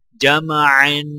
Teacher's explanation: جیم کو میم کے ساتھ ملاتے وقت غنہ نہیں کیا جائے گا کیونکہ میم کے آگے حروف حلقی عین ہے اور عین کے اوپر دو زبر ہیں تو لہٰذا عین پر غنہ کیا جائے گا اور وقف کرنے کی حالت میں عین کو الف کے ساتھ ملایا جائے گا.